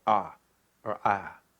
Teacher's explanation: when the diphthongs get eliminated, like in the South, people will say ah or ah. Because they're just getting rid of part of the diphthong.